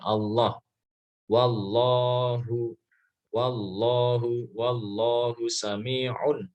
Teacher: Allah di lidahnya itu nempel di gigi bagian dalam atas ya, gigi atas bagian dalam. Allah. Jadi ketika mengucapkan lam itu, ketika mengucapkan Allah, itu posisi lidah itu ada di bagian dalam gigi atas ya, jadi gigi atas bagian dalam. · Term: lam jalalah